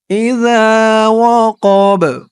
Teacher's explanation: এখানে অক্ফ করার কারণে বার উপরে জবরটা সাকিন হয়ে গেছে, বাটা কলকলার হরফ হয়ে গেছে।